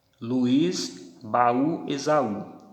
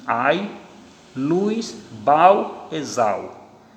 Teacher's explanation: Mas aqui elas são acentuadas para evitar a ditongação, para que eu não pronuncie ai, luz, bau, exau. Então, quando eu acentuo, eu dou autonomia fonética a essa semivogal, ela passa a ser uma vogal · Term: hiato